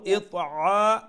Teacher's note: আইন middle throat থেকে গলার মাঝখান থেকে